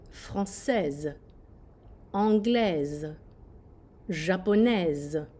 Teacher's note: when you have an s in between two vowels it sounds like a z